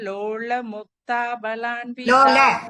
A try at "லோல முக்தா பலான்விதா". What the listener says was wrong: முக்தா திரும்ப நெடில் சொல்ல மாட்டேங்கிறீங்க. முக்தா பலான்விதா. ஆமா நெடில் இருக்கணும், புரியல் சொல்லக்கூடாது.